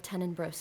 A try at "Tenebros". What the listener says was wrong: There's no second N in Tenenbros. Is Tenebros. Tenebros.